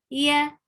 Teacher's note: It's ya, yaday, ya, Yeah, you are touching your middle of your tongue, or you are not even touching the upper palate. You are raising the middle of your tongue towards the upper palate, but it's not actually touching.